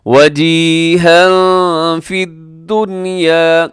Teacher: وجیہا یہاں تنوین کے بعد فا ہے تو یہاں پہ کیا کریں گے؟ اخفا کریں گے